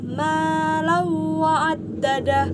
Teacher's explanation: tanwin bertemu dengan huruf waw yang dibaca dengan cara masuk dengan mendengung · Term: idgham bi gunnah